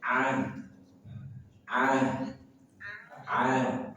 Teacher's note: Kalau di akhir ayat maka dia menjadi ha dia punya sifat rakwah. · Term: tamarbutah